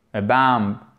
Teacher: On n'entend pas la consonne finale.